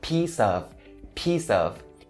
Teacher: And then the next word is the word of, and it starts with a vowel sound, so you can link the S at the end of the word peace over to of